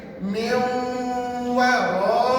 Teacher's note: pastikan miu tu dengung betul-betul dua harakat ya